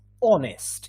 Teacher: We don't pronounce the H.